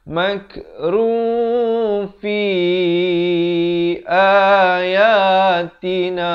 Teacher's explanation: Tapi datang fa, disamarkan. Nak kata bunyi nun pun tidak, bunyi fa pun tidak. Di pertengahannya dengan kadar panjang 2 harakat. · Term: ikhfa hakiki